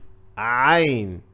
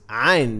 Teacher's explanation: So basically Ain comes from the middle of your throat